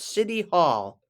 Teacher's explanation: most Americans pronounce that t like a d